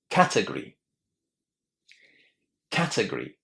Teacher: It's the first syllable that receives the emphasis. Right? Lots of students are having a problem here because they are putting the stress incorrectly on the second syllable.